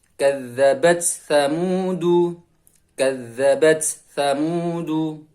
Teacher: Jadi huruf ta masih ada sifat hamasnya.